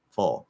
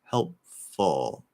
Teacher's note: Anytime there's a schwa or a what I call high schwa, like in book, followed by a dark L, just do the dark L. Ignore the vowel completely and just do the dark L.